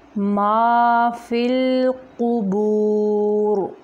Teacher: اگر ہم یہاں پہ وقف کریں گے تو را موٹا ہوگا، اگر وصل کریں گے را باریک ہوگا۔